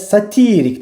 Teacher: həm də satirik dedikdə artıq ikinci hecanın üzərinə gəlir vurğu